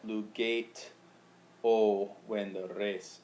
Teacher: the e blends in with the oh